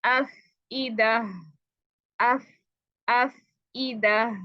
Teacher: इसमें बहुत एयर होती है, एयर आपकी जारी रहनी चाहिए, स्पेशली जब ये साकिन होता है, एयर ज्यादा होती है, टाइमिंग ज्यादा होनी देनी होती है।